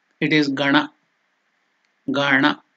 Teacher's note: The tongue should touch the Murdhanya, palate.